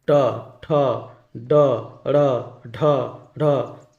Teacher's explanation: ये सब बोलिएगा तो क्या होगा, जीभ का उल्टा भाग मूर्धा को छूता है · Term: मूर्धन्य व्यंजन